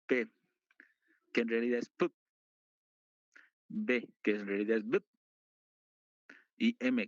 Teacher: necesitamos cerrar o acercar ambos labios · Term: bilabial